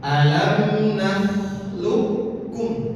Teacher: ketika kof bertemu dengan kaf maka seakan-akan qof-nya ini tidak ada langsung kaf. Alam naklukum bukan naklukum. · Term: diidgamkan